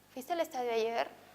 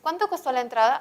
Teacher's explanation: el tono o la inflexión, y también se les llama inflexión entonacional o tonema, es ascendente y luego descendente